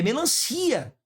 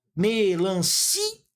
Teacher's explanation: A sílaba forte nem é o lã, é o si.